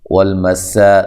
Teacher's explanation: سین کو باریک سیٹی سے الف مد اصلی کی یا مدہ ہے، قو وقو قاف کو